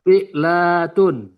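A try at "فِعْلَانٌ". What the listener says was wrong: Dari mana dapat tun?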